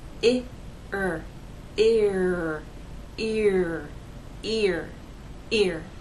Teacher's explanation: take the first vowel sound and glide in to the ER sound